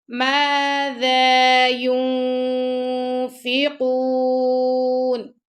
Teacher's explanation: یس سین پر ہم حمز کریں گے، یسألونک، کاف کو ہم نے لائٹ پڑھنا ہے، ماذا ذال کو بھی نرمی سے پڑھیں گے، یا پیش نون یون، نون ساکن کے بعد یہاں پہ فا آ رہا ہے تو یہاں پہ ہم اخفا کریں گے، فا کے مخرج کے پاس اس کی نون کی آواز کو چھپائیں گے، ماذا ينفقون، اور ہم یہاں پہ رکیں گے تو نون کا جو زبر ہے وہ نہیں پڑھا جائے گا، نون کو ہم ساکن کر دیں گے۔